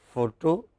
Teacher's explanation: whether you say photo or you say photograph it is stressed on the first syllable